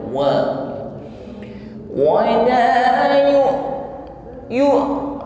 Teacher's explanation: mengucapkan wau dengan himpun bibir ke depan